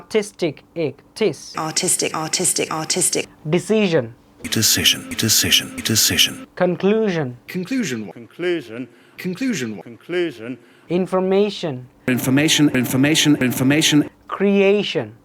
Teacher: তার মানে second last যেটা আছে সেটাতে আমাদের স্ট্রেস হচ্ছে। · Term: penultimate